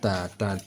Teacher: cara membaca huruf ta dan huruf da yaitu ujung lidah bertemu dengan belakang gigi seri atas ujung lidah bertemu dengan belakang gigi seri seri atas saat kita